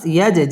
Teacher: জিম কলকলার হরফ ধাক্কা দিয়ে পড়তে হবে